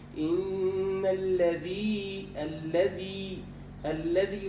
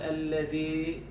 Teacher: إن الذي لابد من إخلاص الكسر، لا نقول الذي.